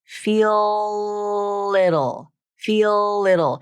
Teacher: The dark L itself is hard to pronounce, but the link is easy because you use a light L to link the two together. So here's an example of when the tongue tip does come up to the alveolar ridge as you complete that link.